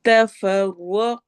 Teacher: کالذین، ذال کو نرمی سے پڑھنا ہے اور یا مدہ کرنا ہے. تفرقوا، را ہیوی ہوگا، قو واو مدہ کے ساتھ